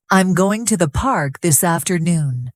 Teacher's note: Those are the important words. The smaller words like I'm to and the are softer. · The stress is on going, park, and afternoon. Those are the important words. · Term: rhythm